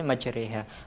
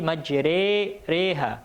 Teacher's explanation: Wa qala rkabu fiha bismillahi majriha, di antara fathah dan kasrah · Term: imalah